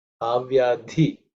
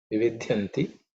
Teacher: This dhi is the fourth letter in the tha varga, so it has to be aspirated.